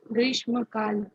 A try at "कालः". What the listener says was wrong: Kala na kalaha. You have to be very particular about visargas also.